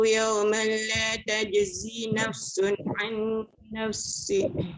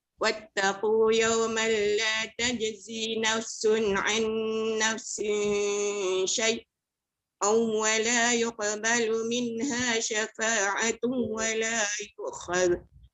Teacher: dibaca dengan idgham bila gunnah. Tak dengung.